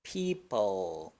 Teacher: esta l retroflex en donde la punta de la lengua se hace más hacia atrás se curvea hacia atrás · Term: Dark l